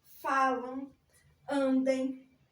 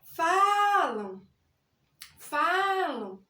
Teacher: verbo podem ser risotônicas e arrisotônicas as formas risotônicas é quanto o acento tônico ou seja o som mais forte da palavra é na raiz do verbo